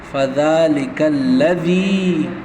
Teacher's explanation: فذلک الذی، یا مدہ اس کو کھینچنا ہے ایک الف کے برابر